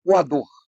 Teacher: a palavra coador, ela tem uma sílaba tônica, que é o dor, não tem acento.